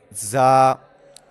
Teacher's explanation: दोनों दांतों के अंदरूनी किनारे से आपने जबान की नोक लगाकर जा को अदा करना है। · ان کے اندر فرق کیا ہے، زا کا ہم نے مخرج پڑھا تھا کہ یہ حروف صفیریہ میں سے ہے، زا حروف صفیریہ میں سے ہے، یعنی یہ زبان کی نوک اور دونوں دانتوں کے اندرونی کنارے سے ادا ہوتے ہیں۔ دونوں دانتوں کے اندرونی کنارے سے آپ نے زبان کی نوک لگا کر زا کو ادا کرنا ہے، جس طرح کہ زا، اور تھوڑی سی سختی بھی پیدا کرنی ہے اسے ادا کرتے وقت کیونکہ یہ سیٹی والے حروف ہیں۔ · زا کو ادا کرتے وقت سیٹی والی آواز نکالنی ہے سختی والی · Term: हुरूफ सफीरिया